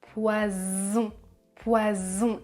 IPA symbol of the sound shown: z